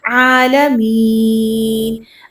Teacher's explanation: عین کو وسط حلق سے نکال کے، حمزہ کے ساتھ نہیں پڑھنا. عالمین پڑھتے ہیں تو وہ کیا ہوتا ہے، حمزہ کے ساتھ حمزہ زبر لام عالمین بن جاتا ہے، جبکہ درست ادائیگی کیا ہے، عالمین.